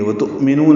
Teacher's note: حمزہ ساکن جھٹکے سے ادا ہوگا